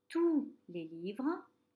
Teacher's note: il n'y a pas de T et je ne prononce pas le S.